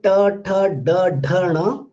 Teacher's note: When you say ta, tha, da, dha, na, all these sounds are retroflex sound, because when you pronounce this, you can find that the tip of the tongue is little bent.